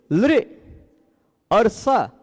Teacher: ल का दंत स का भी दंत और ल का भी विवृत स का भी विवृत